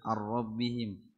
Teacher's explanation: نون ساكنة مدغمة في الراء المفتوحة بغير غنة